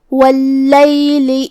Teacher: کلمت واللیل میں لام پہ تشدید ہے تو 2 حرف کے برابر ہمیں لام کو پڑھنا ہے۔ آخری میں لام کے نیچے زیر ہے تو اس کا دھیان رہے۔